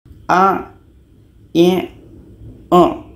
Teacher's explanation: Jadi letaknya ain ini di tengah-tengah tenggorokan.